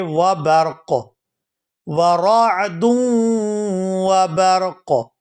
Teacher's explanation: وقف کی صورت میں قاف جو ہے یہ ساکن ہو جائے گا اور اس کو پڑھیں گے وبرق، ورعد وبرق۔ یجعلون، یجعلون، لام